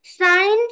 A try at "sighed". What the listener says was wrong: সাইন্ড কোথায় পেলে? সাইড। হ্যাঁ, সাই। এভাবে।